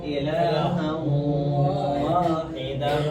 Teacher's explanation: غنّے کے ساتھ ادغام کریں گے